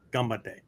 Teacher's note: the N becomes an M sound because it precedes a hard consonant the B sound